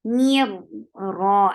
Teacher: Me attach, say e and then attach with ra. Mir ra, as soon you will touch ra, ra will be heavy. For fatha, open your jaws.